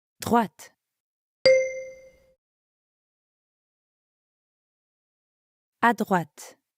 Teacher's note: make sure you're pronouncing the t sound at the end of droite.